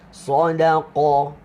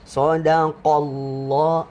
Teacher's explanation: Qaf, pangkal lidah kita menekan. Menekan ke belakang. Dia tolak kuat.